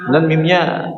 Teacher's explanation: Dan mimnya di situ syuddida, ditasydidkan ya, dibaca dengan tasydid. Maka disempurnakan gunnahnya ya, gunnah musyaddad lebih dari 2 harakat ya, atau kadarnya minimal 2 harakat ya, seperti 2 harakat.